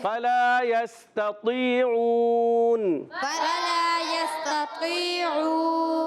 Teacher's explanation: عین واؤ پیش او، واؤ مدہ ہے، ایک الف کھینچنا ہے، عین ادا ہوتا ہے حلق کے درمیان والے حصے سے، اور آخر میں وقف کریں گے تو نون کو ساکن کریں گے، ہو جائے گا مد عارض.